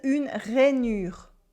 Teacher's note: We have a vowel after the un, so it changes the nasal sound. We have a U sound, which is tricky, and two French R.